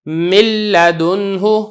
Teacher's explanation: نہ ہم نے اس میں غنہ پڑھا ہے اور نون کی بالکل ادائیگی سرے سے ہوئی ہی نہیں ہے. اس قسم کا جو ادغام ہے اس کو ادغام تام کہا جاتا ہے.